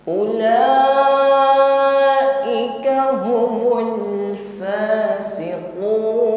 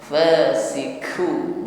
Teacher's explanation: Huruf qaf di sini sifatnya syiddah, ucapkan dengan tekanan yang kuat tanpa diiringi dengan nafas atau bunyi desis. Jangan diucapkan dengan lemah, bukan fasiku, bukan ku, ya, tetapi u, o, ti, u, humul fasiqun.